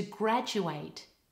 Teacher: The vowel in the second syllable is a very weak a and all the stresses on the first syllable